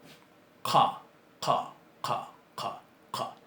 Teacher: Es una C que se pronuncia más atrás. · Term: uvular